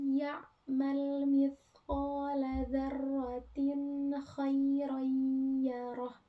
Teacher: Ada huruf nun mati bertemu dengan huruf ya. Nah, itu dibacanya samar dan disertai dengung atau dimasukkan. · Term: idgham